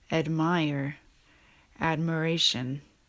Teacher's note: Admire and admiration is one that starts with a long vowel and changes into a schwa.